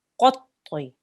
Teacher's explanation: Make sure your mouth is round for both letters because they're both thick. The qaf is thick and the ta is thick.